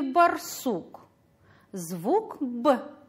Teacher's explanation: Звук согласный при произнесении встречает преграду – губы.